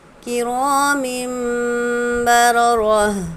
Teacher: میم کے نیچے دو زیر کی تنوین ہے، تنوین کے بعد با ہے، اس لیے تنوین کی آواز کو ہم میم میں بدل دیں گے، غنہ اور اخفا کے ساتھ پڑھیں گے